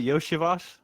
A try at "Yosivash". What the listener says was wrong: No. Yosivash. You said Yoshivash. It's without the H. Like people call him Yoshi, but it's pronounced Yosivash.